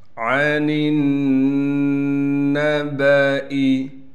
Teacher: نون کو نون سے ملائیں گے غنہ کے ساتھ، اس لیے کہ نون پر تشدید ہے